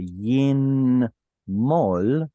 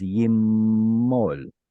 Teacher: guess what noon does at the end of a syllable? It assimilates. So instead of a yin mol, it just simply becomes yimmol.